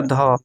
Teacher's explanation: ध का जो उच्चारण स्थान है वो हो जाएगा आपका दंत